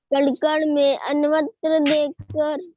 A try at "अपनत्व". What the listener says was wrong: अन्वत्व नहीं, अपनत्व। अपन और पीछे त्व, अपन जैसे ममता के साथ होता है ममत्व, वैसे ही अपने अपन के साथ बनके नया अपनत्व।